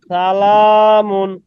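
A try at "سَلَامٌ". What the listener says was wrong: না, সিনটাকে সিটি করতে হবে।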